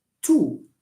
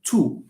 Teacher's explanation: a because you are anticipating the O there so it's two even visually you can see the rounding of of the lips